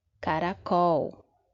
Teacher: a última sílaba eu falo assim com um pouco de mais força. É a nossa sílaba tônica.